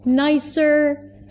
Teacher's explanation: It goes up in pitch. That means something else is coming up. It's like a comma, right? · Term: rising intonation